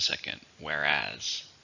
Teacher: How many syllables are in whereas? 2, stress in the second,